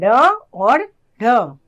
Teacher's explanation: ये वे व्यंजन होते हैं जिनके उच्चारण के समय जीभ पीछे की ओर जाकर एक झटके के साथ आगे गिर जाती है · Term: उत्क्षिप्त व्यंजन